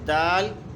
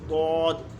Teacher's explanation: دال کی آواز باریک اور سخت ہوتی ہے، جبکہ ضاد کی آواز پر لیکن نرم ہوتی ہے